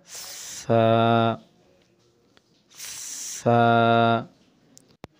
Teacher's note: সামনে আগাই ছা এটি একটি নরম হরফ জিহ্বাটা বের করে দোনোটা দাঁতের মানে উপরের দাঁত এবং নিচের দাঁতের বাহিরে জিহ্বাটা এনে হালকা একটু চাপ দিয়ে বাতাস দিয়ে বলতে হবে